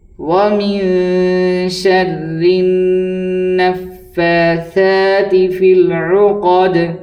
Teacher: وَمِن شَرِّ النَّفَّاثَاتِ فِي الْعُقَدِ فا کی ادائیگی میں عام طور پر غلطی ہو جاتی ہے۔ فا کو ادا کرتے ہیں نیچے کے ہونٹ اندرونی جانب اور اوپر کے سامنے والے دانتوں کے کنارے سے ادا کیا جاتا ہے۔